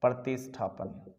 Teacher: दंत्यस्कार को किस में बदलते हैं? मूर्धन्यस्कार में।